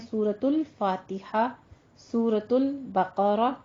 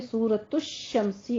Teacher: फा आया तो अल की आवाज आ रही है